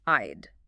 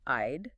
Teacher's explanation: It's the I sound, immediately followed by a soft D sound.